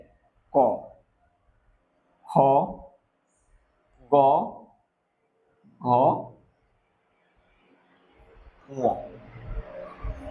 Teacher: উচ্চারণ স্থান হচ্ছে কণ্ঠ। কণ্ঠ থেকে উচ্চারিত হয়।